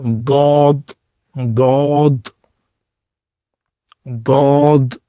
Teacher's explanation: آپ کی زبان کا جو لیفٹ کنارہ ہے، بایاں کنارہ، وہ آپ کے جو دانت ہیں لیفٹ سائڈ والے، ان کے ساتھ ان کے کناروں سے جا کے ملے گا